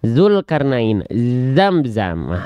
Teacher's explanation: Zai mah punya sifat sofir, berdesis dengan tajam.